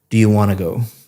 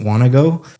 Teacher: Want to go sounds like one word, want to go, cuz you're connecting all the speech up.